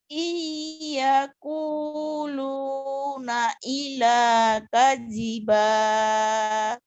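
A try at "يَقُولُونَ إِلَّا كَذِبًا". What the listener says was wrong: ilahnya kurang nyamber. kuluna illa kadziba Yaquluna illa kadziba.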